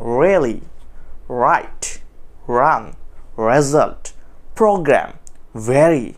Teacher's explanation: অ্যালভিউলার রিজের একটু back পার্টে গিয়ে টিপ অফ টাংটা সেখানে লেগেছে এভাবে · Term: পোস্ট অ্যালভিউলার